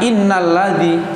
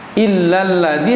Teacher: padahal inna itu gunnah, illa bi ghairi gunnah